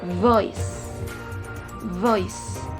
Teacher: Jadi konsonan ini disimbolkan dengan huruf V. Konsonan ini juga tergolong dalam labiodental, frikatif, dan voice sound.